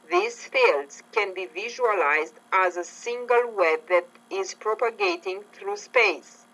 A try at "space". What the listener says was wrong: Not bad. Good job on the space. You carried the vowel sound out longer because it's a long vowel.